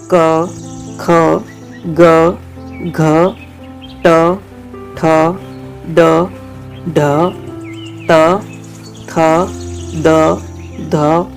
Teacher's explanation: ऐसे व्यंजन जिनके उच्चारण में फेफड़ों से छोड़ी गई हवा किसी अवयव का स्पर्श करने के बाद बाहर निकलती है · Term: स्पर्शी व्यंजन